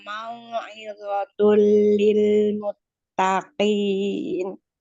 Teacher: tanwin bertemu dengan lam, idgham bila guna, tidak didengungkan.